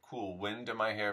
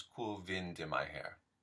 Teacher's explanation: the good old W turning into a V